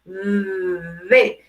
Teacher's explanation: Si ustedes se acuerdan, dijimos que el sonido de la D era un poquito vibrante, como hacer D.